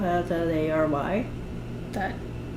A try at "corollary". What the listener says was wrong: That middle what? All I heard was CRY. Corollary? Yeah, corollary. Corollary. Corollary.